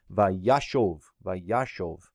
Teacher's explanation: this final syllable is left in a closed and unaccented position, which means the O vowel becomes short. So that indeed is a kametz hatuf, vayashov, vayashov. · This is a vav consecutive form, and what happens with the vav consecutive on these hollow roots is you'll get the accent that will retract to the preformative syllable. And so what happens then is this final syllable is left in a closed and unaccented position, which means the O vowel becomes short.